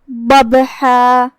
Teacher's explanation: پھر حرف الباء آتا ہے جو کہ با پہ جزم ہے، تو یہاں با کا حکم ہے قلقلہ. قلقلہ کا معنی ہے حرف ساکن کو ہلانا، تو ہم با کو ہلاتے ہوئے یہ کلمہ کو ادا کریں گے